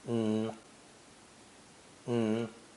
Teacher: And is almost always lightly pronounced with only the N sound.